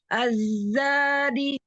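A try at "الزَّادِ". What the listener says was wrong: Az-zadi. Az-za. Ujung lidahnya mundurin lagi sedikit biar sofirnya terdengar. Az-zadi.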